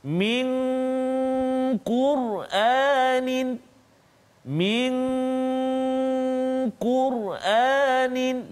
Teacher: nun mati bertemu dengan qaf, min qur'anin, min qur'anin, dengung dua harakat